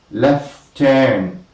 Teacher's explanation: Okay, but you only hear left turn. One t is dropped. It is not heard, and this is what is known as elision.